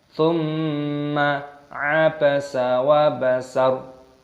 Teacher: mim tasdid hukumnya dibaca gunnah berdengung